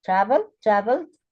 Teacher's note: in travel, the stress is on the first syllable.